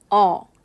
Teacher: 입 모양도 약간 작아지면서 저모음인 아를 발음했을 때보다 입의 크기가 줄어들면서 혀는 살짝 들립니다. 그래서 이 어의 경우는 중모음에 해당이 돼요.